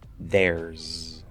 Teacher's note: keep the z there because r is voiced so we're not going to change it to an s in this case